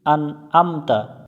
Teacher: আইন গলার মধ্য থেকে উচ্চারণ করতে হবে হামজা শুরু থেকে উচ্চারণ করতে হবে আন আমতা আইন জবর আ